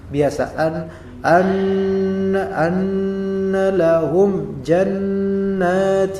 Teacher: mim mati ini maka ada hukum mim mati di sini nah mim mati bertemu dengan Jim kita lihat apakah didengungkan tidak Apakah disembunyikan mimnya tidak berarti dizahirkan maka ini menjadi ditampakkan mimnya · Izhar syafawi, yaitu dizahirkan secara bibirnya. Lahum terkatup biasa. · nun tasdid gunnah, ya, di hidung suaranya